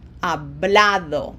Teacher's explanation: No graphic accent, it ends in a vowel, O, therefore emphasis is on this second syllable and it falls right there on the A